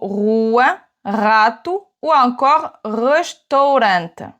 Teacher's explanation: Quand le R est en début de mot, il va se prononcer comme le R en français, sauf que tu vas le rouler légèrement.